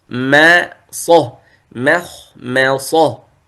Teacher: الخاء والطاء هذا مفخمة، والميم مرقق، فلا تفخم